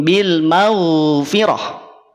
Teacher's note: gainin itu punya sifat rakhwah suaranya dialirkan · Maghfirah, ghain, awas. Huruf ghain tidak perlu dipantulkan. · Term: sifat rokhawah